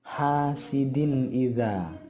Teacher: suara tanwinnya harus dipendekkan dan langsung dimasukkan ke huruf alif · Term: idhar halqi